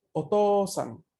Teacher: OU se va a pronunciar una O larga.